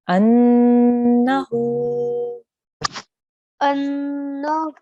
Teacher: make sure we hold on the noon for 2 seconds here, and then we elongate the ha with the vowel for 2 seconds here.